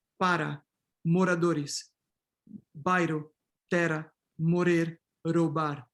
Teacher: in informal African Portuguese, you have neutralization of R. So in Mozambique, you can have para, moradores, bairro, terra, morir, roubar, ou para, moradores, bairro, terra, morrer, roubar.